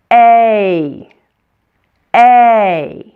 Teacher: In American English, it sounds like this, A. If you slow it down, you notice that it's actually made up of two different vowel sounds. First, we start with an E sound, and then we finish with an E sound, like this, A. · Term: diphthong